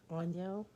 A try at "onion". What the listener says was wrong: No, there's no O at the end. It's almost like the O is silent. Onion. See, I want to go click. right in the middle of that. Onion. Like that. how they sound. That's how they sound. It's like onion.